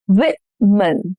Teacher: Stress on the first syllable. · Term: syllable stress